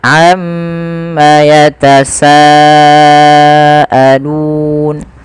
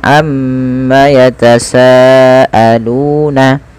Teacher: Karena kita waqaf, teman-teman, pada lafal nun, maka nunnya menjadi nun yang dimatikan, menjadi nun sukun.